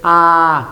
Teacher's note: la lengua baja a su punto más bajo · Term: vocal Baja